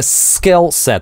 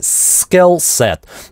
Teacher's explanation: обратите внимание, какое напряженное, интенсивно это /s/, ssskillset.